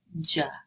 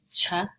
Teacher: So I can say ch or j, and you can hear there's a little bit of a voice in that j that you don't hear in the ch